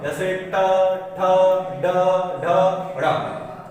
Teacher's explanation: मूर्धन्य कहते हैं मुंह के ऊपर की जो छत होती है उसके आगे वाला जो भाग होता है उसे कहते हैं मूर्धन्य।